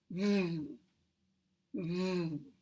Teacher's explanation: We have a very closed position. There's very little space between the teeth and the lower lip. So air is forced out harder. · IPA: [v]